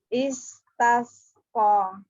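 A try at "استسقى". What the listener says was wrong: Sinnya, rohwahnya nggak ada. Ayo ulang lagi. Sofirnya juga dijaga.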